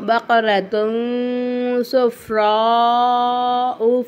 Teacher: எஹ்ஃபாவோட எழுத்து வந்துச்சுன்னா நம்ம என்ன செய்யணும், தன்வீனை வந்து நம்ம வந்து குன்னா செஞ்சு ஓதணும்